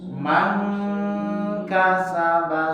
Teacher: Ya, man kasaba, karena dia memang huruf kaf itu berada di pangkal lisan, naik kepada langit-langit